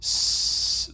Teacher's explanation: you can hear that turbulence or frication noise at your teeth. S, there's a lot of it as the air kind of passes through that narrow constriction between the tip of your tongue and the alveolar ridge. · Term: fricative sound